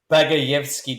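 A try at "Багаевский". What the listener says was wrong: You got to deepen your voice when you do the Russian word. So, Bagayevsky.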